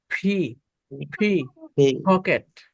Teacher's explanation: থেকে জোরে প্রেসার দিয়ে বের করবেন বাতাস ছিটকে বের হবে ফি মনে করেন এটা পি ও না ফি ও না এর মাঝামাঝি উচ্চারণ